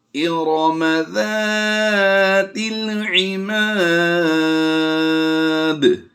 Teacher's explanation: یہاں پر ہم زا نہیں پڑھیں گے بلکہ ہم ذال کو نرمی سے ادا کریں گے